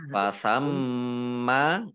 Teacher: Fasamma mimnya dibaca gunnah, ada tasdidnya. Fasamma mim mim tasdid dibaca gunnah atau mendengung ditahan kurang lebih 2 harokat. Fasamma wajhullah jim sukun ya, bacaan qalqalah, baca memantul.